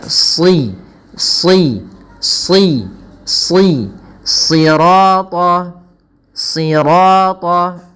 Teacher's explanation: shadnya kita tebalkan dengan mengangkat pangkal lidah kita